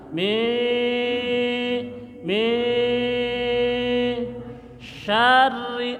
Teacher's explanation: dengung samarkan tahan dua dengung dua ketukan